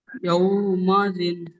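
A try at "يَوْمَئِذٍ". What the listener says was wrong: ইয়াউ মা ইজিন পড়বেন, হামজাজের ই আছে, ইয়াউ মা ইজিন।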